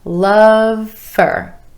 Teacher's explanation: Love for becomes love for. Notice how that word for reduces to fur.